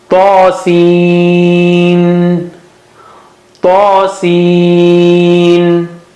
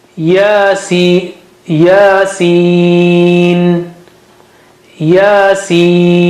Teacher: And one of them has standing fatha, that is ta, and seen has the pointed mud. So we got to stretch it at least 5 times.